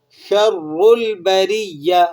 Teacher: را کو موٹا کر لیں گے اس لیے کہ را کے اوپر حرکت ہے، اور بریہ، یا کو آپ سختی کے ساتھ ادا کریں گے کیونکہ یہاں پر یا کے اوپر شد لگا ہوا ہے۔